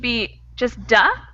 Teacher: that D sound cannot continue. It's an explosive sound and you can't sustain it. So duh would be just duh, where TH you can sustain.